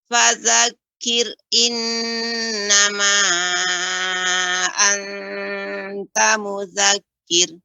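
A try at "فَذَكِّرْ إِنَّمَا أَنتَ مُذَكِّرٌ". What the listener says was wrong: Sebentar Ibu, tadi pada kata fadzakir ini agak lebih tebal. Yang kedua sudah tipis. Jadi seperti mudzakir, jadi fadzakir. Fadzakir innama anta mudzakir.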